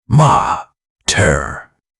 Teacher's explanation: the open vowel at the back of the throat, the tap of the tongue against the roof of the mouth at the end